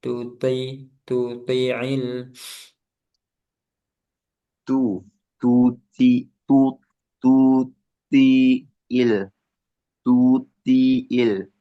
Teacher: Tunya jangan ke bawa tebal tu tetap tipis.